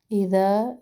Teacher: ذال میں نرمی، ذا الف مدہ